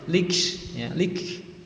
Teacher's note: Min qablik, lik ini ada huruf kaf yang disukun, maka bacaannya menjadi hamus ya, keluar napas sedikit, lik ya, lik.